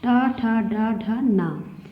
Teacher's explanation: टा से लेके ना तक का उच्चारण स्थान होता है मूर्धा और ये टा वर्ग में आते हैं और मूर्धन्य इनकी जाति है।